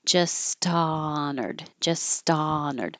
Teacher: You don't make any sound for the H, but you have airflow. So then there's a little delay before the vowel ah.